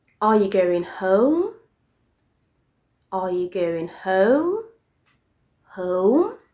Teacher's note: the rising intonation means that the voice gradually goes from a low pitch to a much higher pitch